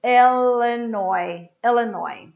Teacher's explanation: I don't pronounce the final S